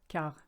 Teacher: Now, if you look at the word quart, it's actually quarter, but with the French phonetic being the way it is, the QU is a K, quart, and you don't say the T, silent letter.